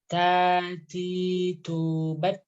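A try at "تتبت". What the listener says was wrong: Oh, ketika berharokat dia jangan terlalu banyak anginnya.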